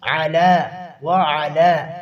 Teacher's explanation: علی قلوبہم، قاف کو پر کرنا ہے. آگے وعلا، علا اور وعلا کے اوپر کھڑی زبر ہے، اس کو ایک الف کے برابر کھینچیں گے.